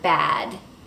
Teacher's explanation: you can see how the jaw drops to make the /æ/ vowel low · it's called a front vowel because the tip of my tongue is in the front of the mouth